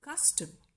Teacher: when it is spoken, it is the first syllable, cus, which is stressed, and the second syllable, tum, is shortened, is not so long, and so it is unstressed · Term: trochee